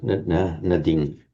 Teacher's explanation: in Pali you can never have a long vowel before the anuswara, before that final M. So it automatically shortens.